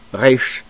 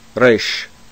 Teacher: Resh is a slightly rolled or trilled R that is produced either in the back of the throat, especially among modern Hebrew speakers, resh, or at the tip of the tongue, resh.